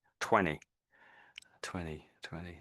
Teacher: I think the T in 20 was just missing, but you sort of said it the way a lot of Brits would say it.